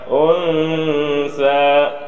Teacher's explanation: Nun ini seolah-olah hilang antara nun dengan sa suaranya. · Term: ikhfa